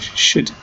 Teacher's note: the Cambridge Dictionary suggests that should, the word itself, can be pronounced using the schwa as the vowel sound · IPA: /ʃəd/